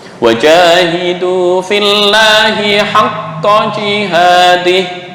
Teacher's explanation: Pangkal lidah ini lebih dalam, qaf sini dekat dengan namanya hanjarah, anak tekak ya. Anak tekak di sini.